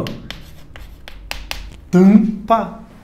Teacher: sempre que m ou n estiver no final de sílaba ele não vai produzir um som próprio ele vai só tornar a vogal anterior nasal